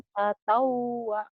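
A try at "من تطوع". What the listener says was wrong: Ainnya ngeden sedikit. Ngeden.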